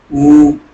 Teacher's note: होंठ गोल हो रहा है, तो ये होता है ओष्ठ